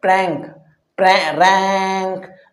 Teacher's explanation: نون جو اوپر ٹچ نہیں ہوتا ہے بلکہ بیچ میں لٹکا رہتا ہے، پرینک، رینک، نون ٹچ نہیں ہوتا ہے۔